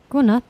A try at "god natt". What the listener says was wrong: God natt. Yeah, so no D. God natt. The D is silent.